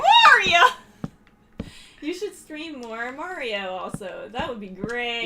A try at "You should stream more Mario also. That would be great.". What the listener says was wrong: You should stream more Mario. Yeah, you keep putting a pause in there.